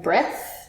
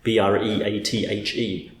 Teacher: So the breath, the actual thing that comes in and out, is just a voiceless TH. But the verb to breathe is voiced.